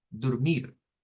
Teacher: Ahí sí sería dormir, con la sílaba tónica en mir, dormir. Nótese que cambia la O por una U.